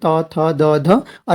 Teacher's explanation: और दंत जिनमें दांत को छूता है, यानी जीभ जो है दांतों को टच करती है